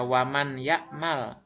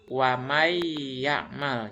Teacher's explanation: Bukan dibaca waman ya'mal bukan, tapi wamai ya'mal. Jadi nun matinya dihilangkan langsung kepada huruf ya. Mai, wamai gitu ya. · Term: idgham